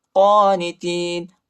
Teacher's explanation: قاف پر کڑا زبر آئے، اس کو ایک الف کی مقدار تک کھینچیں گے